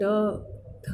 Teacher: आप ध्यान देंगे जब आप ट थ, तो ये सब अक्षर जब वर्ण बोलेंगे, उच्चारण इसका करेंगे, तो इसका हमारी जीभ थोड़ी सी पलट मतलब मुड़ जाती है, तो इसको मूर्धा स्थान दिया हुआ है।